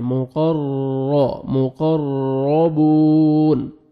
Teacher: مقربون واو مد ہے 1 سیکنڈ با کو کھینچنا ہے اور نون ساکن ہو جائے گا جب سٹاپ کریں گے.